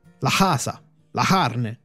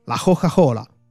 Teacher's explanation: la cosiddetta Gorgia quella per cui alcuni suoni velari vengono aspirati